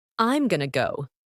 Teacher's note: The to sound gets reduced and connected to the previous word.